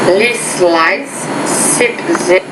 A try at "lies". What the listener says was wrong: It's lice, lies. Okay, I think the Z sound you need to work on, so that is lesson number 20.